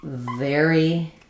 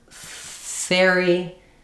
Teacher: The v is just a voiced version of the f sound. So my upper teeth and my lower lip connect vv to restrict the air to make that continuing fricative sound.